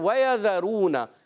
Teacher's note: ذال کا مخرج ہے زبان کا سرا اور اوپر کے دانتوں کے اندرون کنارے یا بیرون کناروں سے اب سا ذال ضا حروف لثویہ کو ادا کرتے ہیں.